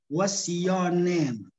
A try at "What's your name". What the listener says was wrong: व्हाट्स योर नेम. योर नेम को मैंने बताया था कि आप मिला के इकट्ठा बोल रहे. योर नेम. व्हाट्स योर नेम. व्हाट्स योर नेम. Your name. Your name.